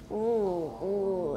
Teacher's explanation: It's a very, very high back ooh. Put your tongue way back and very high and you get ooh, and that's what I have. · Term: very high back vowel